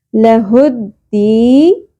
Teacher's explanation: دال زیر یا ساکن حرف مدہ دی، ایک الف کے برابر کھینچیں گے